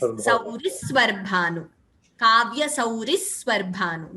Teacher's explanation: That extra S, Dvitvam, that stress should be heard before Svarbhanu.